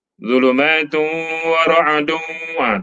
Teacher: Tanwin jumpa waw, idgham mal gunnah.